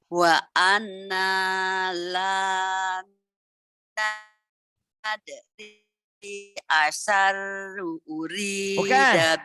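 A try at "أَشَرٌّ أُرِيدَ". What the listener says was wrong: bukan asyaru urida. Bukan asyaru urida. Ini kan ada tasdid. Asyarun, run ada tanwin ketemu alif.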